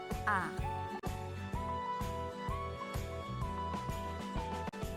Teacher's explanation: vokal terbuka yang terjadi apabila lidah berada dalam posisi serendah mungkin, seperti bunyi A.